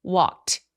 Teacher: 그러면 이 크라는 소리는 walk 성대가 울리지 않는 소리이기 때문에 성대가 울리지 않는 소리로 끝난 경우 통째로 ED를 t로 발음을 합니다